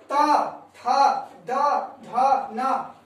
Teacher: इसका उच्चारण दंत से करेंगे